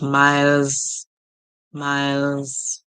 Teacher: And with the S sound, we do not hear S, we hear Z.